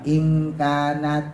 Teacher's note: Ikhfa, nun mati ketemu kaf, ikhfanya abad. Ikhfa artinya samar, abad artinya jauh. Jadi samarnya jauh mendekati eng. Nah, jadi nggak semua ikhfa itu eng.